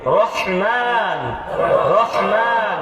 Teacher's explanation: ওই হাটা গলার ভিতর থেকে আসবে কন্ঠনালীর মধ্যখান থেকে